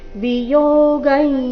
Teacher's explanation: ಅನುಸ್ವರದ ಉಚ್ಚಾರಣೆ ನಾಸಿಕ ಯ ರೀತಿ